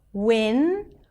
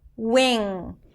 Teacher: for the N, the tip of the tongue goes up. For the NG, the back of the tongue goes up in the back, and the air comes out through the nose.